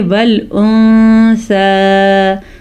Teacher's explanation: وَالْأُنثَى، نون ساکن کے بعد سا آیا ہوا ہے، سا حروف اخفاء میں سے ہے، تو اس لیے یہاں پہ نون ساکن میں ہم نون کو کسی حد تک چھپا کر پڑھیں گے۔ والانثیٰ نہیں پڑھیں گے، ہم اس کو پڑھیں گے والانثیٰ، نون کو کسی حد تک چھپانا ہے۔